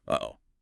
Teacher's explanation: There's that little catch deep in your throat between the two syllables. Uh-oh. That catch is the glottal stop. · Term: glottle stop